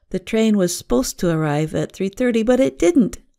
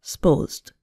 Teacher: a two-syllable word, supposed, becomes more like one syllable